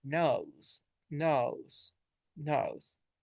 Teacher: it starts relaxed and moves to uh ooh ooh